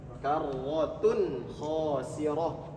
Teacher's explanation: Kemudian ada tanwin juga, dhammah tain bertemu dengan huruf kha. Tanwin atau nun sukun bertemu dengan huruf kha, idhar. Kalau idhar berarti bacanya jelas.